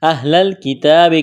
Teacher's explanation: کاف کو باریک کرنا ہے، تا کو باریک کرنا ہے، 1 الف کے برابر تا کو کھینچنا ہے